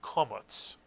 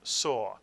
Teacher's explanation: In Ashkenazic Hebrew, the kamats is actually called a komats and makes an aw sound, as in the English word saw.